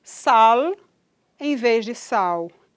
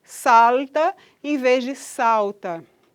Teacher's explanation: lateral, alveolar, vozeada e velarizada